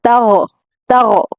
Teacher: عربی میں گاف نہیں ہوتا، اگر ہم غین کو باریک پڑھیں گے تو یہ گاف پڑ جائے گا جو کہ غلط ہوگا۔